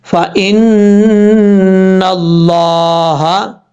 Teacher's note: نون کے اوپر شد ہے، غنہ کریں گے ایک الف کی مقدار. اور یہاں لفظ اللہ ہے، لفظ اللہ سے پہلے زبر ہو تو پر پڑھا جاتا ہے، یہاں لفظ اللہ کو موٹا پڑھیں گے.